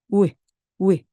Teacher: W는 살짝만 발음하고 넘어가는 겁니다. 입술이 아주 조그맣게 우 하면서 바로 이로 넘어갑니다.